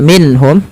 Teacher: Kemudian berlafal minhum, ada nun mati bertemu ha, ini kita namakan dengan bacaan izhar, harus dibaca dengan jelas suara nunnya